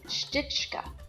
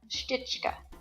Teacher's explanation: the sh sound at the beginning got dropped so you didn't end up with s-h-t-i-c-h-k-a it just was stitch